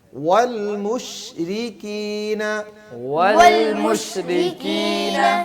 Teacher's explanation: را کو باریک پڑھنا ہے، موٹا نہیں پڑھنا، را کے نیچے زیر ہے